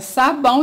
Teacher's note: vai ser uma vogal e uma semivogal mas quando eu faço a separação das sílabas as duas vão ficar o quê juntinhas na mesma sílaba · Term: ditongo